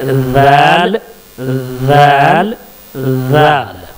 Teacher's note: दाल का मखरज वही है जो सा का है, यानी जुबान की नोक को सामने के ऊपर और नीचे वाले दांतों के दरमियान में ला करके, बीच में ला करके दाल का को प्रोनाउंस करेंगे।